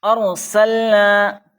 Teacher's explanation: ارسلنا، یہاں پر رائے ساکنہ ہے، رائے ساکنہ سے پہلے زبر آیا ہے، اس لیے رائے ساکنہ کو پر پڑھنا ہے، موٹا پڑھنا ہے،